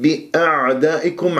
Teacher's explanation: لان العين العربيه الفصيحه عميقه وان تحس كانه عم تبلع شيء مثل ما واحد يشرب ماء بعض المرات ويطلع صوت بهذه الطريقه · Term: العين الساكنه